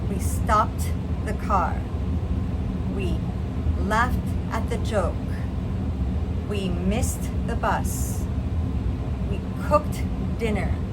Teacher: with the T sound, you'll notice that we do not add an extra syllable. For example, when we say stop, it's still one syllable.